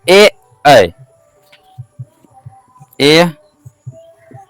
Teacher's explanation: कंठ और तालु से ए ऐ बोलते हैं